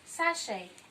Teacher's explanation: letter CH in this word gives the sound sh and not ch. So you say sachet, and take note that letter T is silenced in the word. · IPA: /ʃ/